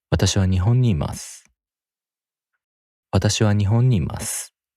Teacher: The pitch goes up after the first mora, which is wa. And the pitch drops after the first accented mora. In this sentence, the first accented mora is also ho, because watashi and wa have no accent.